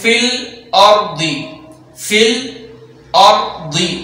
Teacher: ضاد کو پر پڑھیں گے یہاں کیونکہ ضاد حروف مستعلیہ میں سے ہے اور حروف مستعلیہ ہمیشہ پر پڑھے جاتے ہیں، تو یہ ضاد ہے، اس کو پر پڑھا جائے گا ہمیشہ۔